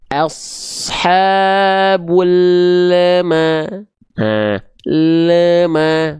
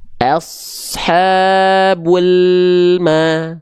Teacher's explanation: Ketika makhraj lam lidahnya dia turun, langsung maknya keluar.